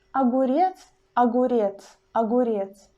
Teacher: as it is the very beginning of the word we pronounce this ah longer and clearly than in the word molecule in the word molecule you almost do not hear this ah